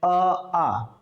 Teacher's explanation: आ का उच्चारण स्थान क्या है भाई? कंठ। कंठ से ही उच्चारित हो रहे हैं।